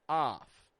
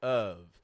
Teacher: in the mouth it's a little lazier of a vowel and we're adding voice to that F we're not just making making a f but a v